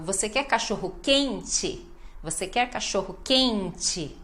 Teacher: O QUEN-TE, ênfase na penúltima